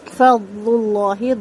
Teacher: اصلی مد، اس کو 2 حرکت لمبا کریں گے۔ فضل اللہ، ضاد بہت اچھے سے پر ہوگا اور ضاد کی آواز چلے گی ہلکی سی ، ٹھیک ہے، لیکن اس میں قلقلہ نہیں کرنا، فضل اللہ